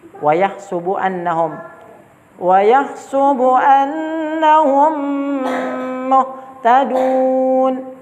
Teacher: Oke, dimasukkan ke dalam mim kedua dengan tempo gunna yang dipanjangkan. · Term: idgham mimi